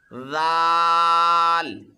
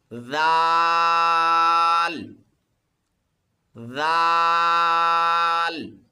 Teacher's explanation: دال دال، آگے حرف ہے جی ذال، ذال کو پڑھنے کا طریقہ یہ ہے، اسے زال نہیں پڑھنا، اور طریقہ سماعت فرما لیں، زبان کو اوپر والے دانتوں کے نیچے رکھ کے اسے ادا کرنا ہے۔ ذال، اس میں زا کی آواز بالکل نہیں آنی چاہیے۔